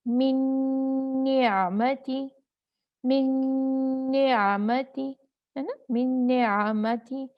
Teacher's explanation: इदगाम तो कामिल हुआ लेकिन गुन्ना बाकी रहा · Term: इदगाम कामिल बगुन्ना